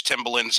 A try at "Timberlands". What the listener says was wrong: Did you say Tim Bullins? Yeah, you said Tim Bullins, not Tim Berlins. Timberlands. Tim Berlins.